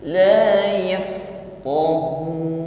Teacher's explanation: Fa sukun Hames ada nafas yang berhembus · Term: hamas